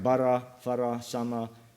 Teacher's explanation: But you just have to listen to them, and you can see it's an entirely different kind of accent too. The first syllable is actually the locus of intonation and emphasis, and there's just a single pitch contour over both syllables. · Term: balanced stress